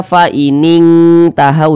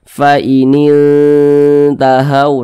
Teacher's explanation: Jadi membunyikannya itu disamarkan kemudian juga didengungkan. Akan tetapi karena dia akrob dekat, jadi kadar dengungnya itu dia lemah. Nah, jadi lebih kuat kadar samarnya begitu. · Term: ikhfa hakiki akrob